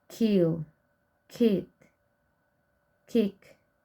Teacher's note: Spelling system of k. Velar stop voiceless. Spelling 1 with K as in kill, kid, kick.